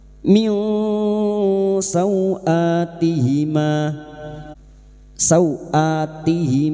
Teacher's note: bunyi nun sukun dan mendengung selama tiga harakat min sauatihima sauati Sau fathah bertemu sukun kita lunakkan seperti bertemu dengan huruf abjad u · nun sukun bertemu sin ikfa hakik kita samarkan bunyi nun sukun dan mendengung selama tiga harakat